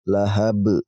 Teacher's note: Maka huruf qalqalahnya berupa ba ini kita pantulkan, teman-teman.